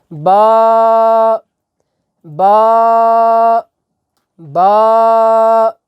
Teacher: با جو ہے یہ دونوں ہونٹوں کا جو تر حصہ ہے، یہ ہمارے ہونٹ ہیں، ایک اس کا یہ باہر حصہ ہے یہ خشک ہے، ایک اس کے تھوڑا سا اندر والا حصہ ہے یہ تر ہے۔ تو جب تری والے دونوں حصوں کو آپس میں ملائیں گے تو وہاں سے حروف شفویہ میں سے با جو ہے وہ ادا ہوگا